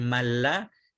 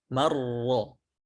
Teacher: Man lam menjadi malla, man ra menjadi marra. Nun atau tanwinnya sempurna masuk ke huruf lam dan ra-nya.